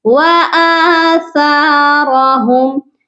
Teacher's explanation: آ کے اوپر کھڑی حرکت ہے، آ کو ہم کھینچیں گے